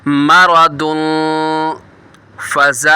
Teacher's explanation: मारादुन, जब मारादुन करेंगे यहाँ पे इख्फ़ा हो रहा है, तनवीन के बाद आगे हुरूफ़ इख्फ़ा में से फ़ा आ रहा है, गुन्ना करके पढ़ेंगे।